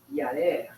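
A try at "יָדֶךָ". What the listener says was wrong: Not a. That's not a resh. You got to look for that dalet. You've got to look for that little tail on the top bar there.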